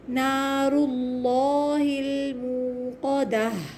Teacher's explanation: آخر میں ہا کو لمبا چلائیں گے، تا کو ہاتھ سے بدل دیں گے اور پھر اس کی آواز کو لمبا چلائیں گے۔